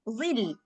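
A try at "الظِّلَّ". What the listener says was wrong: Zil. Zil biasa. Jangan kayak mau bilang Allah. Dia nggak kayak bilang Allah karena dia nggak tebal. Kayak lam, kayak ecek-eceknya kita mau bilang madazillah.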